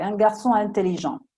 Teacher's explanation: non si prolunga il suono della N con la I, sono staccate, due parole staccate